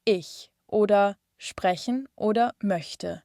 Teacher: Wir haben das weiche CH, wie im Wort ich oder sprechen oder möchte. Man nennt es auch den Ich-Laut. Die Zunge ist dabei vorne am Gaumen.